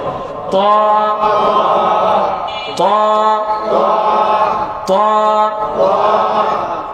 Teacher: জিহ্বার আগা সামনের দুই দাঁতের গোড়ার সাথে শক্ত।